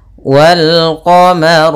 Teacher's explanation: bertemu dengan huruf qamariah salah satunya ada huruf q maka lamnya dibaca dengan jelas · ro-nya tebal karena ro berharakat fathah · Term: alif lam Qariah